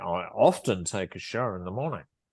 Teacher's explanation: often is one of the words that is stressed in that sentence because this the the speaker is emphasizing it